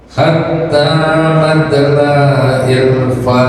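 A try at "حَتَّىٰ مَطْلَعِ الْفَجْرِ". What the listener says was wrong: Nah ini masih kedengeran lanya. Ulang. Hatta matla'il Pokoknya pelan-pelan di situ karena tidak ada matnya, ya, tidak ada matnya, maka dibacanya tidak dipanjangkan bilanya. Hatta matla'il fajr gitu. Bapak kayaknya kalau mengucapkan a terlalu dalam.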